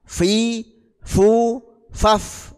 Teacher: bibir bawah bagian dalam mengenai ujung gigi depan atas menjadi makhrajnya huruf Fa